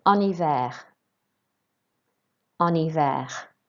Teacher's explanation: it's a silent H. Remember, so you don't pronounce the H at all.